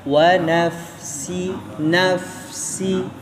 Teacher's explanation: Hati-hati di fa-nya. Keluarin napasnya.